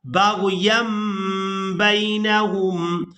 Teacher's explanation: اور یہاں تنوین کے فوراً بعد با ہے تو یہاں بھی تنوین میں جو نون کی آواز ہے اس کو میم کے ساتھ بدل کر ادا کیا جائے گا · نون کی آواز کو میم کے ساتھ بدل کر ادا کریں گے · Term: اقلاب